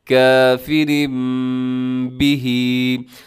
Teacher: تنوین کے بعد یہ نون ساکن اور تنوین کے بعد حرف با، یہاں پر اقلاب ہو رہا ہے. ہم نے تنوین کو میم کے ساتھ تبدیل کر دیا ہے